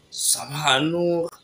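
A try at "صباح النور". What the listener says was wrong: Sabah Nour. Sabah Nour et non Sabah Nour. C'est un dhamma qui est sur le ha et non un fadha.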